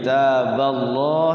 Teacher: lafaz Allah dibaca tafkhim ya, tebal. Taballah bukan taballah ya, kalau taballah jadinya tipis.